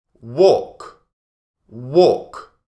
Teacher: We don't say the L